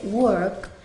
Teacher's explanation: la O adopta el sonido en ciertas ocasiones de una O y una E, como una mezcla.